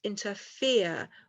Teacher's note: and then we have weak weak strong